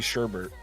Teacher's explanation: Sherbet. There's no R in the second syllable.